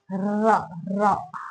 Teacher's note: रा जिसे बोलते हुए लग रहा है रा रा, हवा दोनों साइड से कंपन सा महसूस हो रहा है जीभ में, रा ऐसा। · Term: प्रकंपित व्यंजन